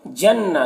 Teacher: نون مشدد ہے تو نون میں غنہ ہوگا اور نون میں کھڑا زبر ہے تو اسے 1 الف کے برابر کھینچیں گے۔